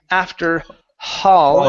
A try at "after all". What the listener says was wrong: take off the H. You're saying hall. There is no H here.